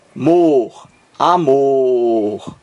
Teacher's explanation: a última amor Mor você pronuncia com mais força então aqui a palavra amor tem um acento tônico na última sílaba Mor amor mais forte aqui está o acento tônico mas não